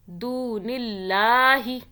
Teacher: دون اللہ، اللہ کو کھینچا، اللہ کو باریک پڑا، دیکھیں اللہ سے پہلے زیر آ رہا ہے. دون اللہ، اللہ کے اوپر کھڑا زبر ہے اس لیے ایک الف کے برابر کھینچا